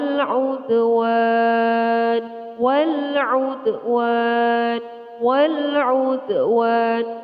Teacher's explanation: Terdapat huruf qalqalah yaitu dal, ini harus dibaca dengan memantul.